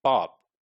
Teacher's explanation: when you just closed your lips for the last p, you can keep your mouth shut for hours and hours, like pop, and you may not be releasing the pressure